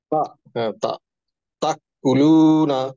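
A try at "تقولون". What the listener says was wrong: স্যার ক হয়ে যাচ্ছে, তা।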